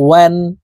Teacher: ওয়াও হরফ ঠোঁট গোল করে দুই ঠোঁটের মাঝে ফাঁকা রেখে উচ্চারণ করতে হবে।